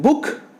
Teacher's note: The back of the tongue is raised to a position between half close and close position.